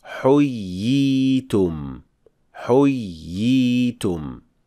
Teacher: So we extend the second ya, since it is a ya as a mad letter